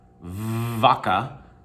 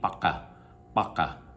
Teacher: It's like a hard F, vaca. But in Spanish, it's more like somewhere between a V and a B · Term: unaspirated V